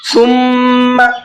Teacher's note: میم کے اوپر تشدید ہے، غنہ کریں گے